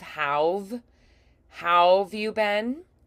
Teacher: we go ow and we have that rounded lip shape and then we have to go to VV pretty quickly. We change the lip and teeth placement very quickly.